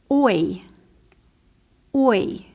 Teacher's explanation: It started with a circle, oi, and it ended in a smile, oi. So our fourth picture has a circle shape first, and then it ends in a smile.